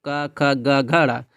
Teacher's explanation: कहां से कंठ यानी गले से है